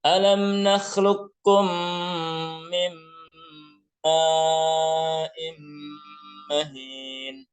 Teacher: Jadi tidak boleh ada pantulan alam nakhluq. Ya, tidak boleh dipantulkan, tapi langsung masuk ke huruf kaf yang bertasydid